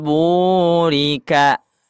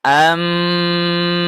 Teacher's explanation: bunyinya berubah ya menjadi huruf mim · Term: iklab